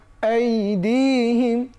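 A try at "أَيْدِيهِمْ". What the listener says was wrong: বেশ, মাশাআল্লাহ।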